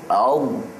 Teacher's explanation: membunyikan huruf dengan panjang di sepanjang tepi dan keliling lidah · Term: istitalah